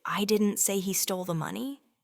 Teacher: But if they say, "I didn't say he stole the money," stressing he means someone else stole it